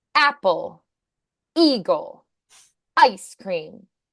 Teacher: Words that start in a vowel now so you can have a really strong glottal strike there